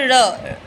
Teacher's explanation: तालू से लुड़क कर बोला जाता है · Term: लुंठित